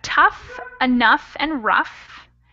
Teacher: These O-U-G-H words are actually, they sound like they end in an F. So that's tough, enough, and rough.